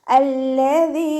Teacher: ഹംദത്തുൽ വസ്ലിന് ശേഷം ലാമ വന്നതുകൊണ്ട് നമ്മൾ ഹംദത്തുൽ വസ്ലിന് ഫതഹ കൊടുത്തിട്ട് ഉച്ചരിക്കും. അല്ലദീ. ദാലിൻ്റെ സൗണ്ട് ക്ലിയർ ആക്കിയിട്ട് തന്നെ പറയുക, ദാലായി പോവരുത്.